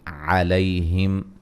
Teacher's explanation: علیہم لیا لین ہے، میم ساکن کا اظہار ہے ملانے کی صورت میں